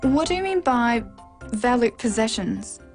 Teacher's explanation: do you mean by valute possessions this is a work question so it needs a falling tone